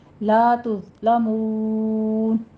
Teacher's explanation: ہیں اسی طرح سے مون سیدھی آواز رکھنی ہے، مدہ کے بعد ہم وقف کر رہے ہیں تو یہاں پہ مد عارض وقفی ہو جائے گی ہماری، 6 کاؤنٹ کرنا ہے